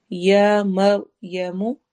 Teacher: را ہیوی ہوگا کیونکہ را سے پہلے والے حرف پر فتحہ زبر آ رہی ہے